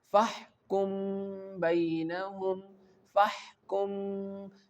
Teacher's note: when the ba comes after the Meem Saakin, we hide the sound of Meem in our nose